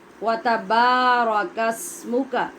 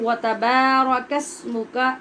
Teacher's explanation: تا پہ زبر واو پہ زبر الف با کے بعد آ رہا ہے، لہٰذا الف کے ساتھ با پڑھتے ہوئے لمبا کریں گے